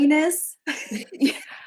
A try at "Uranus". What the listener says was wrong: Uranus, please. Why the first way you said it sounds like you were saying anus. The second way you said it sounds like you were saying urine.